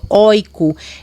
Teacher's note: a palavra heroico tem um ditongo aberto